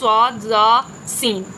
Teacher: ان 3 حروف میں سیٹی کی آواز نکلی ہے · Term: صفیر